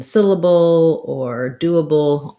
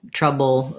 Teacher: that's our dark l with that little little schwa in there